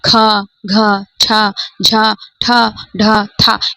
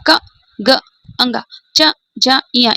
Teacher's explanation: इन्हें बोल रहे हैं ना तो अधिक वायु निकल रही है। जबकि हम कंग, च, ज, य इन्हें बोल रहे हैं तो कम मात्रा निकल रही है वायु की। तो जब इसमें महाप्राण में वायु की मात्रा अधिक निकलती है वे महाप्राण कहलाते हैं।